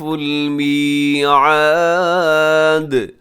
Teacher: میعاد کے آخر میں دال ہے تو وہ ساکن ہوگا دال، تو دال پہ قلقلہ ہوگا